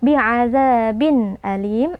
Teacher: tanwinnya kita baca dengan jelas tanpa berdengung. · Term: izhar halqi